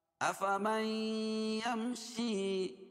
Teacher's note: نون ساکن کے بعد ادغام مع الغنہ کے 4 حرفوں میں سے یا ہے، اس لیے غنہ کر کے پڑھیں گے. یم، میم ساکن کے بعد میم اور با کے علاوہ کوئی اور حرف آئے تو اظہار شفوی ہوتا ہے.